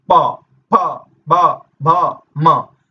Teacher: ये जब बोले जाते हैं इनमें दोनों ओष्ठ का प्रयोग होता है।